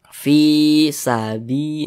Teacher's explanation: Jadi secara singkatnya rumus mad tabi'i yang di kotak nomor 1 itu huruf ya sukun pasangannya adalah tanda baca kasroh, sehingga menyebabkan huruf sebelumnya itu dibaca panjang seperti itu. Fi dibaca panjang, mad tabi'i panjangnya 2 harakat.